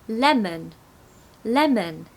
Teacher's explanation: the second part is going to be a schwa